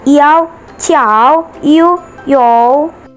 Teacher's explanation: Vokal rangkap 3 ditandai dengan adanya 3 unsur vokal dalam satu suku kata. Dalam pelafalannya, vokal di bagian tengah adalah yang paling nyaring, paling kuat tekanannya.